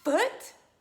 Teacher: using that top teeth to bite your bottom lip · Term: F sound